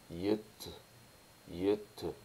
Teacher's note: au lieu de prononcer à l'arrière de la bouche, l'avant de la bouche, là, on arrive à faire un son palatal, yut. Yut, qui est déjà plus facile à prononcer.